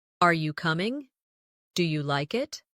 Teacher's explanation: Another important element is intonation when asking questions. In English, our voice usually rises at the end of a yes or no question. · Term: rising tone